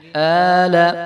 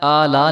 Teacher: آل حمزہ کے اوپر کھڑا زبر ہے تو اس کو جو ہے ہم ایک الف برابر لمبا کریں گے ، آل، آلا نہیں کریں گے، لام کے اوپر زبر ہے